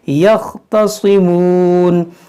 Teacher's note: देखिए यख़्तसिमून, स्वाद को मोटा पढ़ेंगे